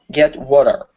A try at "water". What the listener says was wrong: Give me an R sound at the end instead of water. Water.